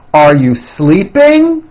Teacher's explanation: notice how my voice goes up at the end of a question